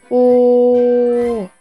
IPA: o